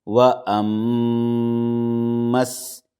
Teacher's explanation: میم میں غنہ کریں گے اور میم کو ڈائریکٹ سین سے ملائیں گے